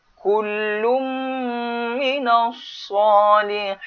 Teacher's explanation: Kul tak dengung. Mim yang dengung. Kullum minas salihin.